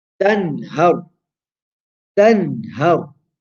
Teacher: We pronounce the noon short, sharp, and clear. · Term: izhar